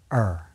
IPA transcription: ər